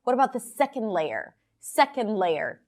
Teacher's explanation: SECOND LAYER - these two words are stressed.